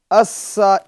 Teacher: اس میں شدت ہے، اس میں سختی ہے، اس میں سیٹی کی آواز بھی پیدا کریں گے